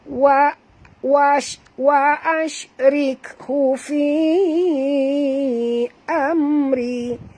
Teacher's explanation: Mim mati bertemu ra, izhar syafawi, tak boleh dengung ya.